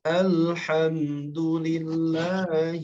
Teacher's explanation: huruf lam sukun pada kalimat Alhamdulillah Apa yang perlu ditegaskan yakni mengalirnya huruf lam sedikit mengalir